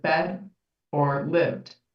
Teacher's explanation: And so that's like if you said the word bed or the word lived, and you said bed or lived, and kind of had a sort of harder, a T sound there instead of a D sound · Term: final consonant devoicing